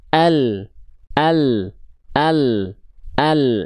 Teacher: Huruf lam itu berarti dilafalkan dari tepi lidah bagian depan yang kanan dan tepi lidah bagian depan yang kiri. Keduanya menyusur sampai ke ujung lidah.